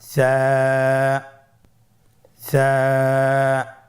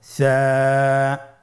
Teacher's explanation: সা হরফটির মাখরাজ হলো উচ্চারণের স্থান জিহ্বার আগা সামনের উপরের 2 দাঁতের আগার সঙ্গে লাগিয়ে উচ্চারিত হয়